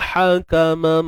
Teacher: ha pedas sekali lagi, tengah kerongkong sempit kan. Wa hakamam IBG juga, idgham bi gunnah.